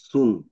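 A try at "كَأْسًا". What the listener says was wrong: সুন কেন? এটা, এটা কি এটা? না না, এটার উপরে এটা কি? ফাথা না, ফাথা না? ফাথা, ডাবল ফাথা, তাহলে কা সান।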